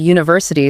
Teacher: the word university starts with a vowel letter, but phonetically it begins with a hard consonant Y sound